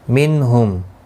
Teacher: منہم نون ساکن کے بعد حروف حلقی کا ہا آیا ہے، اظہار حلقی ہوگا، گنہ نہیں کریں گے. میم ساکن کے بعد لام آیا ہے، اظہار شفوی ہوگا، گنہ نہیں کریں گے